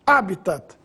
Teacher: a pronúncia oficial é habitat palavra proparoxítona